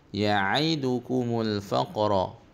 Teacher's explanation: faqa qalqalah kecil, lantulkan balik huruf qaf.